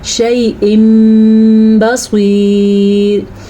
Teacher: نون تنوین کی بجائے اس میں میم کی آواز آئے گی